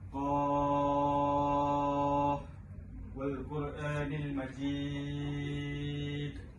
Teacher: mad lazim harfi mukhaffaf dikesan pada kalimah Qaf, di mana perlulah dibaca 6 harakat